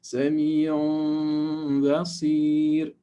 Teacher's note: We need to ghunna for 2 units of length.